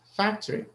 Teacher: so the first syllable is stressed